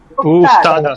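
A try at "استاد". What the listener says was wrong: ও ওস্তাদ, নট উস্তাদ, ওস্তাদ,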